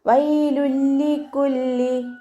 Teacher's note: അപ്പോൾ തെൻവീനിന് ശേഷം ലാം തന്നെ വന്നതുകൊണ്ട് നമ്മൾ അവിടെ എന്താണ് ഇദാം ബിലാ ഉന്നയാണ് കേട്ടോ നിയമം. ഇദാം ചെയ്യുന്നുണ്ട്, പക്ഷേ മണിക്കാതെ ലയിപ്പിച്ചിട്ടാണ് നമ്മളവിടെ ഉച്ചരിക്കുന്നത്.